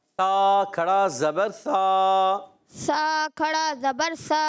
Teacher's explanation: اتنی سیٹی بھی نہیں دے، سا بہت زیادہ نہیں، نارمل طریقے سے